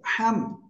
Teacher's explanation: হা গলা চেপে কিন্তু চিকুন আওয়াজ হবে